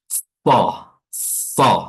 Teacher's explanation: huruf sad, makhrajnya adalah ujung lidah bertemu dengan ujung gigi seri atas dan bawah so, ya, sambil gigi ditutup rapat. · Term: huruf safir